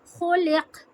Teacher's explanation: तो काफ पे कलकला होगा